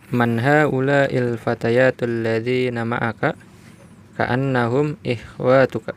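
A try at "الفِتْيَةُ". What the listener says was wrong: Man haula'il fityatu. Fatayat. Wah, bukan fatayat ya. Ya, kalau fatayat itu huruf ya-nya panjang terus ta-nya terbuka, bukan ta marbuthah. Ya, al-fatayatu. Nah, kalau ini yang ya-nya pendek, ta-nya ta apa? Ta marbuthah, bacanya al-fityatu.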